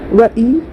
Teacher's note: या के ऊपर तजदीद है, इसको 2 मरतबा पढ़ेंगे, एक बार पिछले वाले हर्फ से मिलाकर, एक बार खुद से। व ई, या में अलिफ मद्दा है, अलिफ से पहले या के ऊपर ज़बर है, एक अलिफ मिकदार खींचकर मारूफ पढ़ेंगे या व ई या।